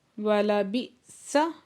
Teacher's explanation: حمزہ ساکن پہ جھٹکا لگے گا